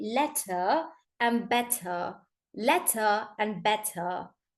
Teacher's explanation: in British you over pronounce the T and you don't pronounce the r